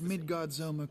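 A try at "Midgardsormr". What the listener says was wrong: pronunciation on Midgar Sommer. It's almost sound like you said a Z in there.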